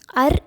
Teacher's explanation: அர் என்று சொல்லும்போது நம் நாக்கு மடிந்து மேல் தாடையை தொடுகிறது